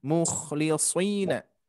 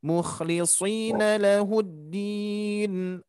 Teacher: Hati-hati huruf kho-nya tingkatkan lagi. Bunyi dengkurannya atau sifatnya harus terdengar.